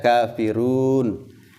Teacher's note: Nah, kafirun, kafiruna kita sukunkan itu disebut dengan mad arid lis sukun. Na dijadikan sukun. Sehingga kafiruna dibaca kafirun.